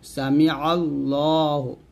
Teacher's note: আল্লাহু বলবেন না জবর থাকার কেন লফজ আল্লাহ লামের ডাইনে বা আল্লাহ শব্দের লামের ডাইনে যদি জবর থাকে তাহলে লামটাকে মোটা করে পড়তে হবে